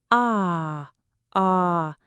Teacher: To make this ah sound, your jaw is still open, but your lips are a little bit rounded, and the sound feels like it's a bit further back in your throat.